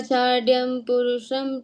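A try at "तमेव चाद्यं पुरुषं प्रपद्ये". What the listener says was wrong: चाड्यम, चाड्यम कहाँ है? चाद्यम द।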